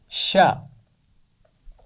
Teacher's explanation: شین کی آواز ہے شا اور اس کا مخرج ہے زبان کا درمیان کا حصہ اور اوپر کا تالو. زبان کے درمیان کے حصے کو اوپر کے تالو کے قریب لے جانے سے شین کی آواز ادا ہوتی ہے